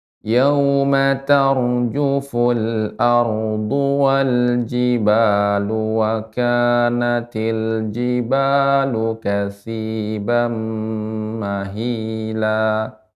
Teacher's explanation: Ya, perhatikan ya Ibu, panjang pendeknya. Ma tidak panjang, junya juga tidak panjang ya.